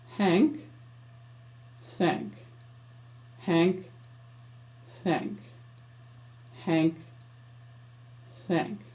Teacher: change the H friction sound into a TH friction sound by aiming my tongue tip upwards a little